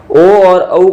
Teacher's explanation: ओ और औ का है वह उच्चारण है वो कंठ और ओष्ठ से मिलकर बनता है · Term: कंठोष्टम